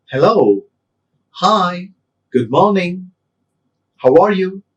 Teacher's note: All these cheerful greetings, we use rising tone. I repeat, all cheerful greetings, we use rising tone.